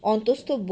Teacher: অন্তস্থ ব দাঁত এবং ঠোঁটের সংমিশ্রণে উচ্চারিত হয় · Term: দন্তষ্ঠ ধ্বনি